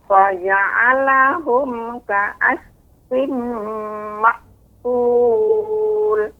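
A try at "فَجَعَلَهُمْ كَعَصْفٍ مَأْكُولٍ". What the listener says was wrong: Coba tebalkan lagi nek. Aus. Mulut seperti bulat ke depan. Kemudian hati-hati nek antara huruf a dan huruf ain. Jangan sampai faja'alahum, tapi faja'alahum, lebih ditekan sedikit.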